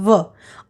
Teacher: दांत और ओठ के संयोग से व का उच्चारण होता है व। और ब का उच्चारण दो ओठों के मेल से होता है। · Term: दंतोष्ठ